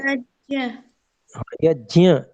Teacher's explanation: यहाँ पर थोड़ी नासिका से भी आएगा, क्योंकि जो ञ होता है, च छ ज झ ञ, उसको नासिका से ही बोला जाता है। नासिका भी उसमें होता है, मतलब स्वस्थान नासिका स्थान, जी।